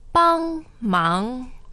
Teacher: 帮忙 and the tones are 帮 first, 忙 second